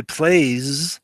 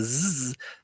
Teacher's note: So that S at the end, which sounds like a zzz sound, right? The phoneme is actually zzz, even though the spelling would be an S